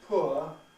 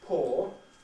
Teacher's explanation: Similarly, the blue line represents the movement away from poor towards poor, as the opposite of rich, so that it then becomes the same as when you pour something out